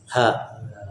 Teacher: Ha itu tenggorokan bagian bawah. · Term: huruf ha